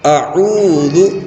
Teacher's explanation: قل اعوذ، یہاں پر واو مدہ ہے، واو ساکن سے پہلے پیش آتا ہے تو واو مدہ ہوتا ہے، واو مدہ کو کھینچ کر پڑھتے ہیں